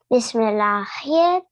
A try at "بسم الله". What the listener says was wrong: No, the ha of Allah will be soft.